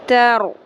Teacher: یہاں پہ رو کو پر کریں گے کیونکہ رو ساکن سے پہلے ہے زبر